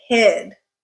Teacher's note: when the I is followed by a voiced consonant and it is in a stressed syllable, then that length stretches out. It is longer